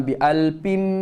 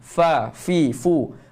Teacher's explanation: huruf fa gigi kapak dan perut bibir bawah. Jangan muncul mulut, jangan tutup mulut.